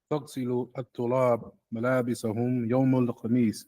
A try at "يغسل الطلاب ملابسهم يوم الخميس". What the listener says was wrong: Why would it be a tagsil? You're saying tagsil.